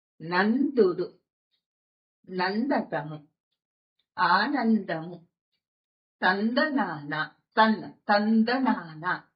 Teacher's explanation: నా త అనే అల్లులతో పాటుగా వచ్చిన అనుస్వారాన్ని మనం నకారంతో కలిపి పలుకుతున్నాము